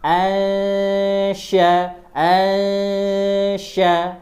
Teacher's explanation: huruf sya lidah tengah naik ke langit-langit.